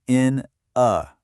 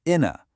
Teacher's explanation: the last consonant sound of one word gets pushed over to start the next word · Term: linking